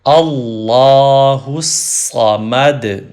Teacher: دال پہ کلکلا یا ایکو ساؤنڈ پروڈیوس کریں گے